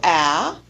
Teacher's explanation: is a representation of the position of the tongue for a a front vowel with the front portion of the tongue lowered in the forward part of the oral cavity